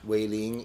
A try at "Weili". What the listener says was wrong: There's no G. Weili.